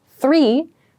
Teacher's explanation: I'm not making any sound with my throat when I say the TH